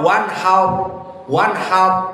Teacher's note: Kalau ditanya kenapa mufakhamah padahal dia sukun? Naam, ro asakinah namun qablahu fathah. Ha yang sebelumnya fathah har menjadikan ro mufakhamah.